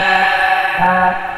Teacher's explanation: এটা কিন্তু হা না, এটা হ্যা, হ্যা চাপিয়ে বলতে হবে।